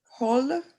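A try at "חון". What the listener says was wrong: Okay. Hon. It's a final noon. Hon.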